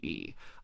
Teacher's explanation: a high front tongue gives you e